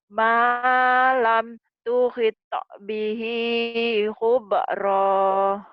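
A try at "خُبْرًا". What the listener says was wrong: Khubra jangan hubrah.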